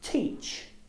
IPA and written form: tiːtʆ (teach)